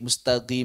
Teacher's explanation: sebagian orang-orang Yaman mohon maaf sering baca qnya pakai g